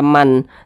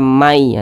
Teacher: maka huruf nun jadi n Seharusnya kan dibaca Man akan tetapi karena nun sukun berjumpa dengan huruf ya maka tidak dibaca Man tapi dibaca Mai langsung masuk ke huruf yanya